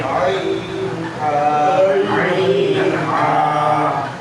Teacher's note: দুই নম্বর মাখরাজ হলকের মধ্যখান হইতে হলকের মধ্যখান হইতে